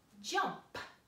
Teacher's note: That P at the end P, was unvoiced